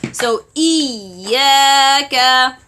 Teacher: And then we have E, Hamza Kasra, E. Close the vocal cords, then open it because it is Kasra.